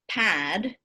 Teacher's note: in the case of pad because that ah vowel is followed by a voiced consonant it's going to be longer